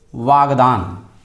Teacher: प्रथम वर्ण का जो प्रथम शब्द का जो अंतिम वर्ण है उसमें परिवर्तन आ रहा है, उसमें विकार आ रहा है। यही क जो है ग में कन्वर्ट हो रहा है। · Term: व्यंजन संधि